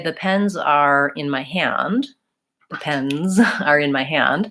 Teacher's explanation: I'm linking the word pens and the word are and I'm always using that strong Z